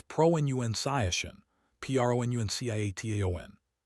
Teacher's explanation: The middle syllable rhymes with fun, not with bounce